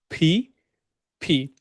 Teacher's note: দুইটা ঠোট একসাথে লাগবে এন্ড দেন ভিতর থেকে আমরা একটা বাতাস বের করবো মানে ফোর্স করে বাতাস বের করবো